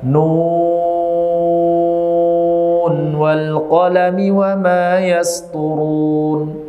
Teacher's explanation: nun sukun bertemu dengan huruf wwu maka tidak boleh diidamkan